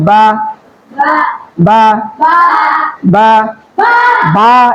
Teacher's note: দুই ঠোঁটের ভিজা অংশ থেকে এই যে ভিজা অংশ আছে না এই দুইটা ঠোঁটের ভিজা অংশ থেকে উচ্চারণ হবে বা